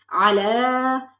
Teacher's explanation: علا، علا میں عین زبر آ، لام کھڑا زبر لا، علا، کھڑا زبر کو تھوڑا سا کھینچ کے پڑھا جاتا ہے